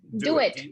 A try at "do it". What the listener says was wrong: Okay, so your D, do it, is pronounced just a little bit back on your palate. Do it. It's different to the way I say it. I say do it.